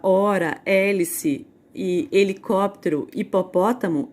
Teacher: Agora, uma letra que não representa som algum, é a letra H, né? Quando eu falo a palavra hora, hélice e helicóptero, hipopótamo, eu não produzo o som do H. Eu não vou falar H hora, H hélice, H hipopótamo, porque o som ele não tem.